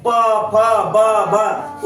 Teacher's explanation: प बोलिए, दोनों ओठ सटता है, दोनों ओठ सटता है ना?